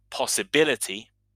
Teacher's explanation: the primary stress is on the B syllable and the secondary stress is on the P sound